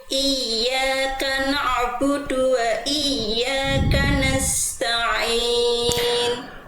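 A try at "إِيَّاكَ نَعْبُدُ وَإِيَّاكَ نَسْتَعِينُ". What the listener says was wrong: Oke, baik Bunda, huruf ainnya ya, huruf ainnya jangan sampai apa tuh namanya? Jangan memantul juga, tapi mengalir sedikit suaranya.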